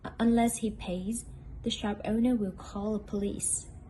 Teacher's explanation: the tone rises in the if clause and falls gradually in the main clause